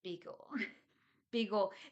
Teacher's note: they don't really say the L sound, right? So it's like Beagle with a W sound rather than an L sound